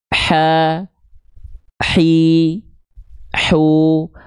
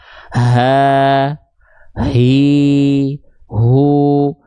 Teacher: H kecil itu tepat dilafalkan dari bagian tengah tenggorokan, berbisik karakternya.